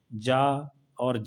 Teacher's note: दोनों सघोष है और अल्प प्राण है